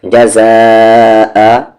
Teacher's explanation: زا الف پر کھینچیں گے اسے 3 سے 4 حرکت کے ایکول کیونکہ آگے حمزہ ہے ، یہ الف پر مد نہیں ہے، یہ زا الف پہ